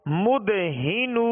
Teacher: ہا کو ابتدائی حلق سے ادا کریں گے، مد ہی نو، نون زبر نہ، مدہنون۔